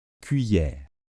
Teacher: le E final on ne l'entend pas il est muet